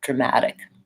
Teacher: Americans will almost always use a flap T there